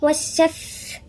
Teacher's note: هنا والشفع الشين مشددة يعني ساكن ومتحرك. والشف الفاء هنا في همس